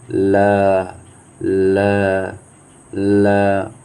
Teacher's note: जब ल बोलेंगे तो आपके जीभ के अगल बगल में आसपास जो है हवा निकलती है। बोलिए ल ल ल, तो देखिए हवा निकल रहा है ना, तो आसपास या से जो हवा निकलती है तो उसको पार्श्विक कहते हैं।